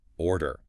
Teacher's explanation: What you need to know for natural rhythm is that the first syllable carries all the weight. It is much stronger than the second. · I push the air out on the or, and I completely relax on the dare.